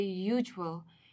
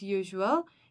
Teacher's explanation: Hence, we designate an in front of hour, while some other example when we use with usual, even though we use U, which is a vowel alphabet, we do not use vowel sound when we say usual. We use Y while we pronounce usual.